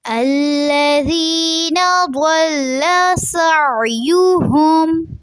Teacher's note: سعیہم میں عین کو واضح رکھنا ہے، حلق سے آواز آنی چاہیے